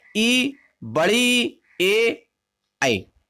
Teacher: जिन स्वरों के उच्चारण में जीभ का अग्रभाग काम करता है, उन्हें हम अग्र स्वर कहते हैं।